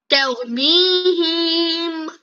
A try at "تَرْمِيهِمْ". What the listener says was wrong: হি টান হবে না, হি টান হবে না, তারমিহিম হিম, হি কেন টানো তুমি?